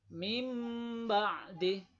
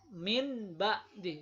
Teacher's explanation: Cara membacanya adalah dengung. Ba-nya ini seperti menjadi huruf mim. Jadi mim ba'di, bukan min ba'di. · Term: iqlab